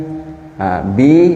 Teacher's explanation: bertemunya bibir atas dan bibir bawah